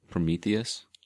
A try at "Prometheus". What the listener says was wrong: No, you didn't. You didn't add the E in there.